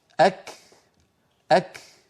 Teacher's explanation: العرب كانت تنطق الكاف في أول نطقها محبوسة الصوت، ثم يفرجون عنها يعني يباعدون طرفي المخرج فيتدفق شيء من الهواء الذي كان محبوسا خلف المخرج